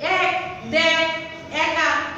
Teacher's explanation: এ ধ্বনির বিবৃত উচ্চারণ ইংরেজি ক্যাট ও ব্যাটের মতো।